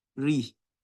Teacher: when raw has kasra on it, it is pronounced by doing tarqiq. Ri. So normally when raw has fatha or dhamma, raw fatha, raw dhamma, ru, raw kesra, ri.